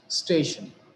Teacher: They are station. Shan is the ultimate syllable and the syllable which is preceding it is stay. So we have given the stress on stay